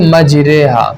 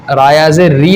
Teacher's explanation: زبر کو زیر کی طرف اور الف کو یا کی طرف مائل کرنے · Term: امالہ